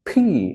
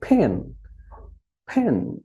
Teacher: দুই ঠোঁট আমরা একসঙ্গে একটু জোরে করে বলবো